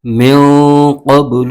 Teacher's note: ساکن ہے، نون ساکن کو میم کے ساتھ ملائیں گے اور اس نون ساکن کے آگے حرف قوف آ رہا ہے جو کہ حروف اخفا میں سے ہے، تو یہاں پر اخفا کا قاعدہ ہو رہا ہے، یہاں پر غنہ کر کے پڑھیں گے